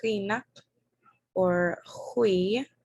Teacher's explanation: And that G in Alutiiq is making a ch sound. This is going to be towards the back of your tongue.